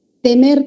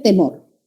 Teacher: A nivel de vocales, de similaridad tiene que son vocales medias. La diferencia está en que una es anterior y la otra es posterior.